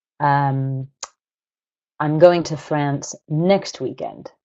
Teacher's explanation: I've emphasized the word next I've put the nucleus of my sentence on that word because I'm contrasting it with a different word like this weekend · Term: nuclear stress